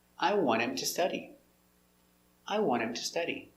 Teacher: the T is silent and the H is silent, so it's want him.